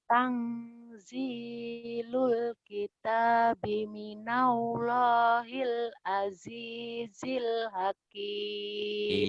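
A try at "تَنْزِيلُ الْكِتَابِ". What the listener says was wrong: Tangnya jangan eng banget ya. Sekedar aja. Tanzilul kitabi minallahil azizil hakim.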